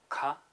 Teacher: So short and high, ka.